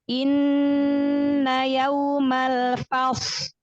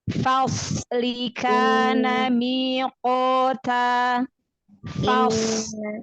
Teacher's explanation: shod ini adalah huruf punya sifat isti'la. Ya, berarti pangkal lidahnya terangkat. Lalu shod juga punya sifat iltobak, terkepung suaranya.